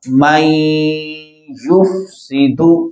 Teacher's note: نون ساکن کے بعد یا حروف یرملون میں سے ہے یہاں پر ادغام بالغنہ ادغام کی دو قسمیں ہیں ادغام بالغنہ اور ادغام بلا غنہ